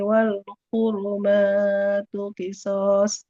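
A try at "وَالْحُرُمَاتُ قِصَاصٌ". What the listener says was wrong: Itu slotnya tebal, Bu. So, naikkan pangkal lidahnya.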